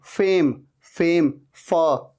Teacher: ऊपर के दांत नीचे वाले लिप पे आ रहे हैं, टच हो रहे हैं